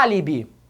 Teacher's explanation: na primeira palavra em álibi o som da sílaba forte foi aberto